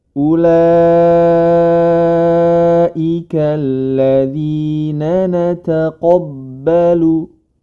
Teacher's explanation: Ulaika alladzina nataqabbalu huruf qafnya saja yang tebal